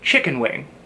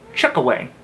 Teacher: Like most terms in this particular dialect, the key is to remove certain consonants from the word. In this case, remove the N.